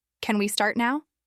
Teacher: Most learners say the second one feels more natural. That's because of the rising tone at the end. It makes it sound like you're genuinely asking, not demanding or assuming.